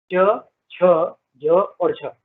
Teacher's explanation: च, छ, ज और झ संस्कृत भाषा, पाली भाषा, प्राकृत भाषा और अपभ्रंश भाषा, इन सभी भाषा में ये स्पर्श व्यंजन थे, किंतु आदिकालीन हिंदी में ये स्पर्श संघर्षी हो गए और तब से अब तक स्पर्श संघर्षी ही है।